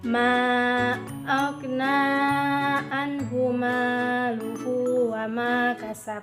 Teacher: Terdiri dari alif, ha, ho, ain, ho, ha, hamzah. Huruf hukum bacaan izhar halki dilafalkan dengan terang dan tanpa gunah atau dengung.